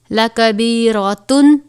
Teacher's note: تنوین کے بعد حروف حلقی میں سے حمزہ ہے، غنہ نہیں ہوگا